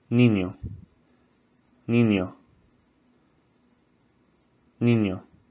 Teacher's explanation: Sort of feel the N and the H together. It's very nasal also.